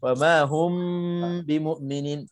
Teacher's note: Ikhfa syafawi terjadi jika mim mati berjumpa dengan ba. Okey. Cara bacanya dengung dengan 2 harakat.